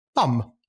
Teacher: you press your lips together for the B, and then you put your lips in a bit of a circle for the o, and then closed again for an M sound